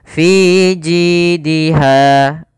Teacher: Kemudian pada lafal ha ada mad tabi'i, yaitu panjangnya 2 harakat, fathah bertemu alif, maka suara fi ji dan ha harus sama